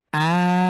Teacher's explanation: তাহলে কিভাবে পড়ব? আম, অর্থাৎ আ কে আমরা ৪ আলিফ টেনে পড়ব প্লাস আমরা মিমের উপরে আবার গুণনা করব কারণ এখানে তাসদিদ হয়েছে মিমের উপরে।